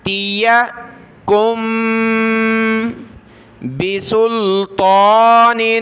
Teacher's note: تا زیر تی، یا زبر یا، تیا، ان تیا کم بسلطان، تا کو اوپر کھینچا ایک الف کی مقدار اور موٹا کریں گے